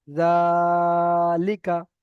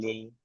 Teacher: লামের নিচে জের এসেছে, যেটি হলো হারাকাত, হারাকাতের পড়াকে তাড়াতাড়ি পড়তে হয়, টান দেওয়া নিষেধ।